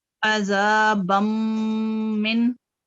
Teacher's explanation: मीम जो है ये गुन्ना लेटर है, 2 सेकंड के साथ इसको गुन्ना के साथ नेजर साउंड के साथ पढ़ेंगे, और आगे नून जो है वो साकिन है।